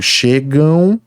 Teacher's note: o ditongo nasal tem dois sons de vogal e ocorre no final da palavra